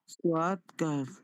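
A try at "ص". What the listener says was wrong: সোয়াদ নয়, সদ। সদ। হ্যাঁ, পুরো অক্ষর সদ।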